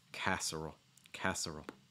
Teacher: the l sound is going to be more of a dark l